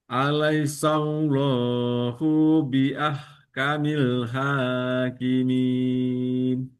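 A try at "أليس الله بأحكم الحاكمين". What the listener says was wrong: Hu-nya pendek saja. Oke, ingat kalau dia tidak ada panjang, pendekkan saja. Seolah-olah tidak ada apa-apa selain huruf setelah hu-nya. Setelah hu adalah ba, langsung masuk dia ke ba.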